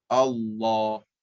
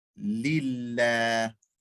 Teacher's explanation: In Allah, it's full mouth. In lillah, empty mouth.